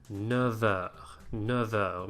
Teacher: word that ends with F, followed by a word that starts with a vowel sound, the F will liaise as a V, not a F